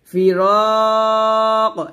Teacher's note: ওয়াযান্না আন্নাহুল ফিরাক, এখনো তিন আলিফ টান দিয়ে কফকে আমরা কলকলা করব